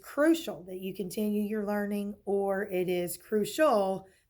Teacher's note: You can hear that the accent is on the first syllable. The other way you know that is because it is a final stable syllable and those accents come before those final stable syllables.